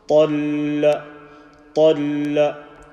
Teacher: But you join the ta with the lam and say the lam with the shadda in such a way that you don't break the sound and you apply the correct shadda sound.